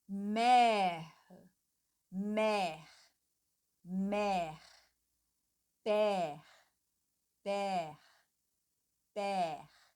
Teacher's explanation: praticamente nem tem o E, porque a gente vai mais aqui pronunciar o R, né? Mère, père, père. · esse accent grave, ele abre completamente o E